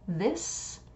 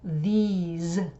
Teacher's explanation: a s this and then The plural demonstrative is these so it's an e sound and a z sound instead of a s sound